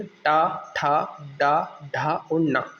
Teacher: तो ये क्या होता है? हमारी जीभ जब हमारी मूर्धा, यानी कि हमारा जो माउथ का ऊपरी भाग होता है उससे टकराती है, तब जाके ये साउंड बनते हैं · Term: मूर्धन्य व्यंजन